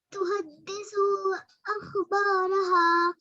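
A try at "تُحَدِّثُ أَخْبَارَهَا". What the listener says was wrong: دیکھیے تحدث سا پر پیش ہے، لمبا نہیں ہوتا ہے پیش۔ تحدث اخبارها،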